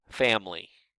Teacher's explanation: most of the time, when we're speaking less formally, we pronounce that with only 2 syllables, family. We delete a sound in the middle of the word.